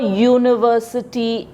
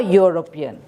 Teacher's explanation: So the pronunciation of U in both the sentences is YU and Y is a consonant.